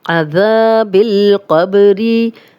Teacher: काफ को बारीक नहीं करेंगे। क़ब्री, बा पे जज़म आ गई है तो ये कलकला है